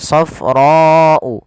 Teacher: Panjangkan huruf ra sepanjang 4 harokat karena di sini ada bacaan yang kita namakan dengan mad wajib muttasil.